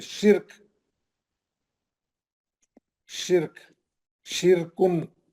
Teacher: रा साकिन है, रा यहाँ पे भी साकिन है और उससे पहले वाले हर्फ पे जेर है, ये रा पतली पड़ जाएगी क्योंकि उससे पहले वाला जेर उसको गिरा देगा